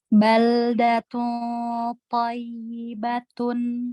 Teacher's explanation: Toknya sudah tebal dan lidahnya sudah mengarah ke belakang gigi atas ya untuk ikhfa-nya. Cuman tadi ya bertasydid ya, ya bertasydidnya itu harusnya lebih naber, lebih naber ya.